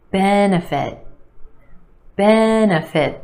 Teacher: 3 syllables here. Our emphasis on the first syllable